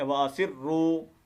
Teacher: ٹھیک ہے، وَأَسِرُّوا، یہ دیکھیں واو مدہ ہے یہاں پر. اس کو را کو ہم تھوڑا لمبا کر کے پڑھیں گے، را کو موٹا کرنا ہے